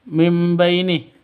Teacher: Nun mati bertemu dengan ba. Cara bacanya mengganti sifatnya ba menjadi mim. Artinya ini bacaan iklab.